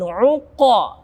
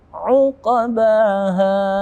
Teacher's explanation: Ada uqabaha, ada qaf mati, kita temukan di akhir-akhir, tapi tetap dia bukan yang terakhir karena dia di tengah-tengah, bukan di terakhir dalam waqaf, maka huruf ini, qaf yang mati ini kita masukkan kepada qalqalah sughra yang pantulannya ringan. Uqabaha, uqabaha, bukan uqa terlalu tebal.